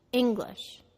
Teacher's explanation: The first syllable is stressed, ing, and the second syllable is slightly de-stressed, glish.